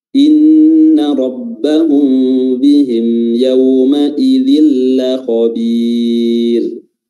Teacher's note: Huruf ro-nya tipis karena sukun didahului oleh huruf yang berharakat kasrah